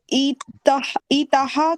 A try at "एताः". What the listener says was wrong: एताः, ई जैसा सुनाई दे रहा है।